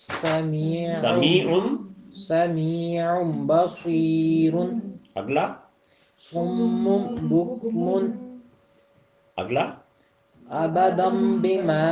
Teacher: نون کی آواز کو ختم کر کے تو آگے بے کے ساتھ مل جانا ہے